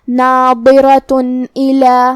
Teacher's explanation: اگر ہم یہ آیت کو اگلی آیت کے ساتھ ملا کے پڑھے تو حرف الالف کلمت الا دوسری والی آیت میں حروف الاظہار میں سے ہے اور اظہار کا معنی ہے ظاہر کرنا، اور تنوین کی اصلیت نون ساکن ہے تو ہم یہ تنوین کو ظاہر کریں گے اور اسے نون ساکن پڑھیں گے اور بغیر غنہ سے یہ حکم کو ادا کریں گے